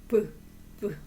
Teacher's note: 또 다시 불 비읍 발음이 잘 안 되는 거예요 왜 그러냐면 브 발음이 안 울림 소리이며 파열음에 속해요 브브 그니까 터지면서 나는 소리라는 뜻이에요 그래서 잘 발음하기가 힘든 거예요